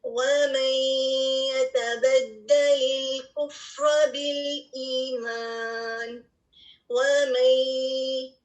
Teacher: اب دوسرے لیٹر کو دیکھ لیجئے، یا کو، وَمَن يَتَبَدَّلِ الْكُفْرَ بِالْإِيمَانِ، وَمَن، جو ساؤنڈ ہے نا مئی کی، یہ اس لیے آ رہی ہے کیونکہ نون ساکن جو ہے اس کی غنہ کی خصوصیت جو ہے وہ کمپلیٹلی غائب نہیں ہوئی بلکہ وہ ظاہر ہو رہی ہے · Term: ادغام ناقص